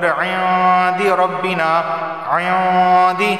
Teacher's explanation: غنہ ہوگا، کیونکہ نون ساکن کے بعد دال آیا ہے اور دال حروف اخفا میں سے اخفا والا غنہ ہوگا۔